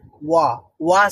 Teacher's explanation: তো ওয়া sound produce করতে হলে আমাদের শুধু দুইটা ঠোঁটকে প্রথমেই হচ্ছে একটু গোল করতে হয়, তারপরে একটু আস্তে আস্তে প্রসারিত করতে হয়। ওয়া, ওয়া, মানে ভিতর থেকে সাউন্ডও প্রডিউস হবে এবং আমার ঠোঁটটা ছোট অংশ মানে ছোট্ট গোলাকার থেকে একটু বড় গোলাকার হবে, তাহলে ওয়া হয়ে যাবে, ওয়া।